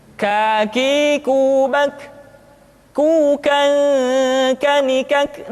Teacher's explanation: huruf k diucapkan dengan mengangkat pangkal lidah kita ke posisi di depan huruf qaf